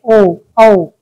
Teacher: कंठोष् जिसमें कंठ और ओष्ठ दोनों का मिलाकर प्रयोग किया जाता है तो उन्हें कंठोष् कहते हैं